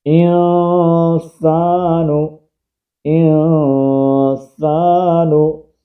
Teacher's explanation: الف مدہ ہے، ایک الف کی مقدار کے اندر کھینچیں گے، نون کو نہیں کھینچیں گے